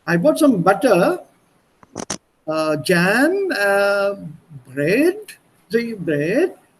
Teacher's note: nach dem Komma macht man eine kleine Pause und auch die Intonation geht nicht nach unten, sondern bleibt ein bisschen nach oben stehend. A little to the top, so that the listener expects something.